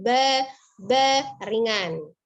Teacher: Tetapi huruf ba sifatnya izlaq, ya, ringan. Jadi tidak ditahan-tahan, suaranya ba, tidak, tapi ba ringan.